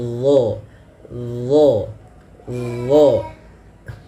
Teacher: huruf do ini dia makhrajnya sama dengan huruf dalzal akan tetapi yang membedakan adalah huruf d ini harus ditebalkan pangkal lidah kita naik